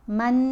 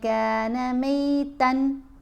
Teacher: نون کی آواز کو ناک میں چھپانا بھی ہے، اور ایک الف کی مقدار جتنا ٹھہر کر بھی پڑھنا ہے، غنہ خفیف بھی یہاں کریں گے۔ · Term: اخفاء